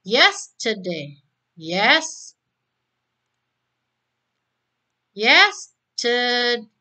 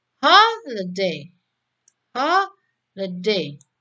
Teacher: Ada 3 silabel yang ditekankan adalah silabel pertama.